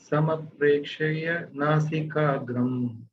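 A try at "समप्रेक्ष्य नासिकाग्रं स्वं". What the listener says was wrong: It's not sama. I think we did it wrong. Samprekshya nasikagram swam. Swam.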